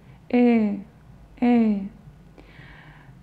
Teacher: Он похож на звук «э», но вы прикрываете рот, рот почти закрыт. «Э».